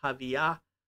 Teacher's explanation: it has that unaspirated hey at the end